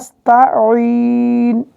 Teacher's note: আইনের জন্য কিন্তু গলা চিপা আদায় করতে হবে